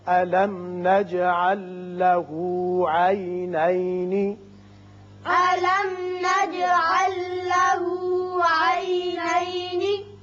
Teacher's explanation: میم پر اظہار شفوی، جیم کی صفت قلقلہ، یہاں لام ساکن آگے لام سے ملائیں گے، ادغام اس کا بغیر غنہ ہوگا. عینین یہ وصل کی صورت میں، وقت کی صورت میں نون ساکن. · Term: ادغام بغیر غنہ